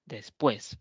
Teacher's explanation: la mayor fuerza voz la tiene la vocal abierta la e es después por lo tanto ahí habrá un diptongo · Por ejemplo, después. La mayor fuerza de voz la tiene la vocal abierta, la E.